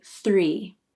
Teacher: sir here's a close-up of my mouth as I say 3 my tongue tip comes out for the th then quickly pulls back in for the ER then my lips spread as I say the e vowel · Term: thr cluster